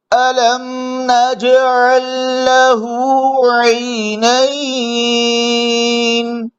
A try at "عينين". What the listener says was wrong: आई आई इसमें गला न घोटे और मुंह को जरा खोल ले आई आई अलम नजअल लहू आइनैन